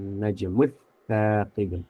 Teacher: Idgham biasa karena huruf sa itu sendiri huruf lidah, bukan huruf hidung. Ya. Jadi idghamnya biasa saja, tidak sampai digunakan seperti an-najmu yang memang meleburkan huruf nun, huruf hidung.